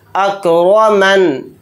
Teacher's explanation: यहाँ पर नून के नीचे ज़ेर है तो ज़ेर नहीं पढ़ेंगे क्योंकि यहाँ पर आयत हो रही है। हालत वक्फ़ में नून को साकिन बनाकर पढ़ेंगे